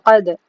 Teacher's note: دا کو تھوڑا ٹکر کھا کے گھمانا ہوتا ہے